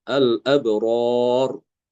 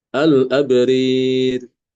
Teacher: Al-abrari dibacanya al-abrir. Jangan lupa rohnya dibaca tipis ya, yang roh yang kedua itu.